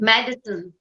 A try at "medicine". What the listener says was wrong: Again, don't emphasize the medi.